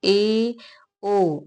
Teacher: जिस में मुंह को आधा ही क्लोज करना होता है तो ए ओ इन सब के उच्चारण में आधा मुंह क्लोज होता है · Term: अर्ध सम